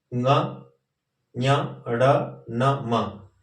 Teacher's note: और ये व्यंजन वर्ण है ङ, ञ, ड़, न, म। इनका उच्चारण स्थान जो है नासिका है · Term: अनुनासिक